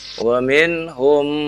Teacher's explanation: ada mim bertemu dengan mim, maka ditahan 2 harokat